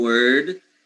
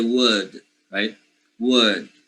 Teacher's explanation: To make the timing for the R present, it's like, oh, there is an R there, but I don't pronounce it, so I need to make the vowel a little longer. So I would say instead of saying word, I would just make a space there, say would, right?